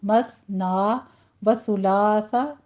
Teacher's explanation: مثنا میں سا کی آواز آپ نے نرمی سے ادا کرنی ہے، سیٹی کی آواز نہیں آنی چاہیے